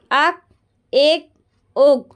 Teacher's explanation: ये वाले काफ में प्यारे बच्चों आवाज़ को पलटेंगे क्योंकि ये हुर्फ़े कलकला है